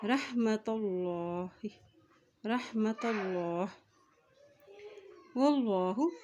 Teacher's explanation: अल्लाह के नाम से पहले ज़बर आ गया तो अल्लाह का नाम यहाँ पर मोटा अदा किया जाएगा